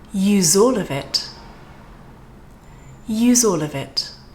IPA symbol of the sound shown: z